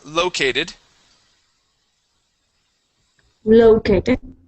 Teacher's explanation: located with the stress at the beginning